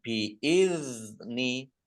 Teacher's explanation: Nun tasdid, dibaca gunnah atau mendengung, ditahan 2 harokat. Bi'izni dal sukun, ini bukan kolkolah, jangan dipantulkan